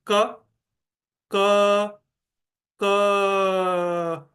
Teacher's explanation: ऐसे ही अगर मैं क का उच्चारण करूं कि क, क, क, तो आखिरी में अ ही सुनाई देता है। क सिर्फ स्टार्ट में सुनाई दे रहा है, बाकी फिर आगे प्रोलोंग नहीं होता। क्योंकि ये सभी म्यूट साउंड्स है, स्पर्श से वो उत्पन्न होते हैं, इसलिए उनको हम प्रोलोंग नहीं कर सकते हैं।